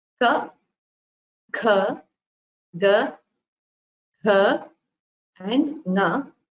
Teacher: you will realize that they all originate from the throat. So these are called gutturals.